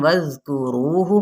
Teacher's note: हा की पेश को लंबा नहीं करेंगे